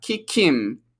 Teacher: you'll notice again, she reduces him, no H. And because we have a consonant and a vowel sound, the K comes over.